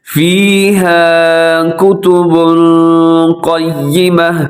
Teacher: یہاں کتب پہ اخفا ہو رہا ہے، یعنی آواز کو اپنے ناک میں رکھنا ہے۔ اگر اخفا مشکل ہو تو آپ یہاں پہ غنہ کر سکتے ہیں، کتب ایسے بھی ہو سکتا ہے، یعنی مقصد یہ ہے کہ یہاں پر اپنے آواز کو ناک میں لے کے جانا ہے، اس کو ناک میں رکھنا ہے آواز کو۔